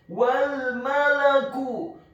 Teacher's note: huruf wawunya dibaca fathah, cukup satu harokat saja karena setelahnya langsung disambung ke huruf lam yang sukun